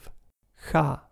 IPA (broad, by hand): x